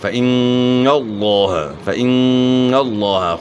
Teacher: تو یہاں لفظ اللہ کلام سے پہلے زبر ہے تو لفظ اللہ کلام خوب موٹا کر کے اور منہ بھر کر پڑھیں گے · نون مشدد میں ہمیشہ غنہ ہوتا ہے 1 الف کے مقدار کے برابر. اور لفظ اللہ کلام سے پہلے زبر ہو تو لفظ اللہ کلام موٹا پڑا جاتا ہے.